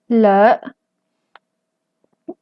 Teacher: tiene tono ascendente y también tiene laringización